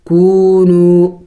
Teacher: کاف واو پیش کو، نون واو پیش نو، کونو، کونو نہیں پڑھیں گے، کاف اور واو بھی واو مدہ ہے اور نون واو یہ بھی واو مدہ ہے، دونوں کو ایک الف کے مقدار لمبا کرنا ہوگا، کھینچنا ہوگا